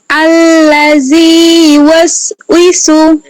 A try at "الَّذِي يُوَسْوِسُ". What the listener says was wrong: এই যে তাড়াহুড়ো করলেন কেন? আমি যতটুকু ধীরে বলছি এতটুকু বলেন। الذي يوسوس